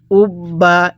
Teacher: আমি কিন্তু বা টা দুইবার উচ্চারণ করছি একবার তার পূর্বের হরফের সাথে একবার একবার তার নিজের হরফের সাথে একবার তাহলে যেই হরফের উপরে এই তাজদি চিহ্নটা দেখব ওই হরফটা আমরা